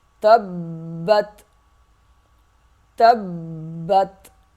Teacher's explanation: با سختی سے ادا ہوگا تا کے ساتھ مل کے، اور با جو ہے پھر تا اگلے تا کے ساتھ مل جائے گا۔ پہلا تا با سے سختی سے ملے گا، دوسرا سخت نہیں ہوگا، تبت، تبت۔ وقف بھی ایسے کریں گے، تبت، سختی کے ساتھ ذرا رک کر۔ · تا با زبر تب، با تا زبر بت، تبت۔ با سختی سے ادا ہوگا تا کے ساتھ مل کے، اور با جو ہے پھر تا اگلے تا کے ساتھ مل جائے گا۔